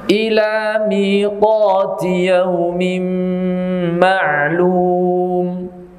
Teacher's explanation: pengucapan idgham yang di situ harus disertai suara dari rongga hidung. Jadi suara rongga hidung harus ada menyertainya, bi lil musahabah, betul-betul diiringi, disertai. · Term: idgham bigunah